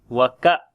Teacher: Kaf we read in light sound. On the Hamza we make jerk sound, and it is shiddat quality on the Hamza, like we discontinuing our sound.